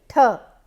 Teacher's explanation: So, aspiration is basically the air is taken out more, there is the puff of the air is with a force and more quantity of air comes out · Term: aspirated sounds